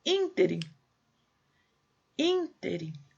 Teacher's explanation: Acento no primeiro i. Proparoxítona.